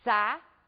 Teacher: ao pronunciarmos a palavra saída, nós podemos observar que as vogais ficam em sílabas separadas. São duas vogais pronunciadas com a mesma intensidade. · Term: hiato